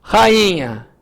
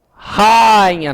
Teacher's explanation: é o i que é tônico